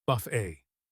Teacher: In English, we pronounce it buff a rhymes with day. We do not pronounce the t at the end because it is a French word.